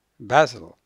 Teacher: If you pronounce it Brazil, somebody, an English speaker, may think you are talking about the city of Basel in Switzerland, which has a similar sound. It has 2 syllables, but as you can hear, the stress is on the first syllable